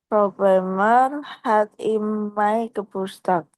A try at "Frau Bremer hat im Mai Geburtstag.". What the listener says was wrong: Iya, bukan Mei, bacanya hat im Mai Geburtstag. iya, Mai ya, AI Mai ya.